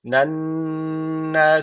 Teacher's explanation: şeddeli nun var mutlaka bir Elif miktar tutuyoruz